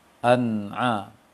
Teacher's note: mengucapkan huruf nun sukun dengan jelas atau bunyi nun sukun pada tanwin dengan jelas tanpa dengung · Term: izhar